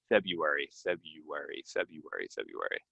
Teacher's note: you can say the r but most people do not